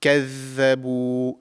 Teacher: The tip of the tongue slightly comes out of the mouth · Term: zaal